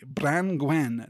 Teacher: branwen which splits into two syllables between the n and the g